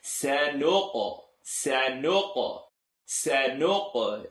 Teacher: Qaf is one of the 5 letters in rule number 1 of rhythm. It bounces